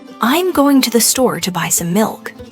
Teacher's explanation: Notice how certain words are emphasized or stressed. Going, store, buy, and milk.